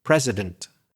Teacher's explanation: So too much there in the final vowel. That's the classic schwa sound at the end of a word, which isn't stressed